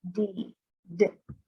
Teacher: this is just like the sound of the t but we turn our voice box on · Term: sound of the d